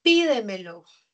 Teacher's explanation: la mayor fuerza de voz está en la anterior a la antepenúltima. Esta es una palabra esdrújula.